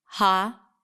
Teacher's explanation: Now notice that I didn't say holiday because the middle vowel is a schwa sound. So I reduced the vowel there to a schwa. Ha-l-day. So we have 3 vowels here and 3 syllables as a result.